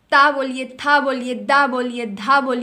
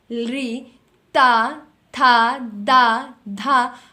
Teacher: आप लगातार बोल करके देख रहे होंगे कि आपकी जो जीभ है वह आपके ऊपर वाले दांतों को अंदर की ओर से स्पर्श कर रही है